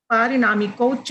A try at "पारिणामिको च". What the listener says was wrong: पारिणामिको च, पारिणामिको च, प में आकार है।